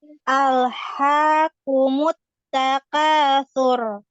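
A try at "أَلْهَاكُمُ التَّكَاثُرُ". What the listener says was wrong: Nah, sekali lagi ditegaskan untuk yang akhir ya, jangan sampai kepanjangan. Jangan jangan langsung ya. Jangan ikhtilas. Jadi disempurnakan semua ketukannya ya. Jadi satu-satu ketukan semua disempurnakan.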